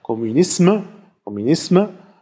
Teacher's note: Ich kann das natürlich mit Schmallaut am Ende sprechen, dann heißt es natürlich ganz klar Kommunisme, Kommunisme. Also das S bleibt erhalten, wird nicht zu stimmhaftem S und man spricht noch ein Schwa. Wenn man das Schwa weglässt, dann geschieht etwas Seltsames, dann wird das M stimmlos.